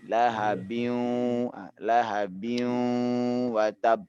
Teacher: Cara memasukkan gunnah itu adalah menyengaukan suara waw ini.